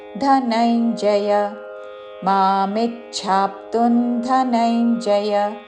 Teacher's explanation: ధనంజయ చివరిలో య హ్రస్వము. ధనంజయ అని దీర్ఘంలోకి వెళ్ళకూడదు.